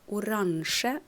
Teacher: And these adjectives, they end on a weak vowel normally, like oransje, you see stress on A. E is a weak vowel in the end.